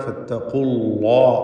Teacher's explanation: അല്ലാഹ എന്ന ഇസ്മുൽ ജലാല, അതിലുള്ള ലാമിനെയും തഫ്ഖീം ചെയ്യണം. ലാമിന് മുമ്പ് ഉച്ചരിക്കുന്ന ളമ്മാണ് എന്നതുകൊണ്ട് ലാമിന് തഫ്ഖീമാണ്. ഫത്തഖുല്ലാ, അല്ലാഹ് എന്ന ശബ്ദം ഒരു കാരണവശാലും അല്ലാഹ് എന്ന് നാവ് പുറത്തേക്കിട്ട് മുൻപല്ല് ടച്ച് ചെയ്തുകൊണ്ട് ലാമിനെ ഉച്ചരിക്കരുത്.